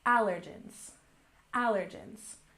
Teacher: And next we have allergens. We stress the first syllable, allergens, allergens.